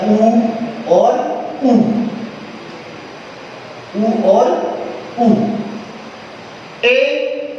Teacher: जो जिह्वा है वो पीछे की ओर खिसकती है, इस वजह से ये पश्च स्वर कहा जाता है